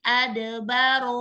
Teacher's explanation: Ad kolkola sugro. Ro dibaca tafkhim atau tebal karena harokat fathah.